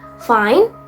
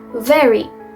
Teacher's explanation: Labiodental sound dihasilkan dari bibir bawah menyentuh gigi atas.